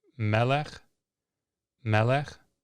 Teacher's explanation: Notice the sagol pattern and the accent on the first syllable. Melech. This is a segolate noun.